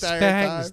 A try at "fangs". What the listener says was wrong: You gotta pronounce that N. You gotta hit that N real hard. because I wasn't sure what you were saying for a second.